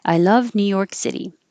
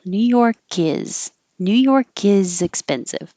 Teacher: When you say New York, your tongue goes to the K and stops. If there's a consonant after it, you won't hear it.